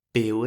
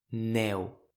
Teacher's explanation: Il existe la même différence entre le EU fermé de beure (boire) et le ÈU ouvert de «nèu» (neige).